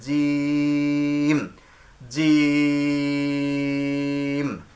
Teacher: জিম কণ্ঠনালীর মাঝখান থেকে, এই যে জিমটা উচ্চারণ হবে, হাটা উচ্চারণ কণ্ঠনালীর মাঝখান থেকে, জিম উচ্চারণ, জিম জিহ্বার মাঝখান তার বরাবর তালুর সাথে লাগবে। জিম।